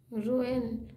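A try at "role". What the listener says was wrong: वाई है क्या नहीं तो एल है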